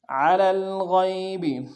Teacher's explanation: غین کو موٹا ادا کرتے ہوئے یا کے سامنے لانا ہے، یا لین بغیر کھینچے پڑیں گے